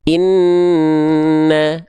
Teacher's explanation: Ini baru dia ditahan 2 harokat ya, ditahan 2 harokat karena dia ada hukum namanya gunnah. Gunnah itu artinya dia dengung, didengungkan, ditahan selama 2 harokat.